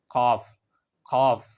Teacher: কাফ আছে এই কাফটাকে আদায় করতে হয় পাঁচ নাম্বার মাখরজ থেকে পাঁচ নাম্বার মাখরজ হলো জিহ্বার গুড়ি সোজা উপরে তালুর সাথে লাগিয়ে